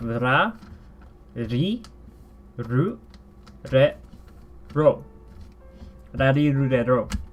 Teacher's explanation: it is neither the R sound that we have in English nor the L sound. It's in between of the two.